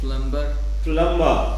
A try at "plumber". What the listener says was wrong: No, B is not there. Plumber. B is not pronounced. Plumber. Plumber. It's ma, not bar. Plumber.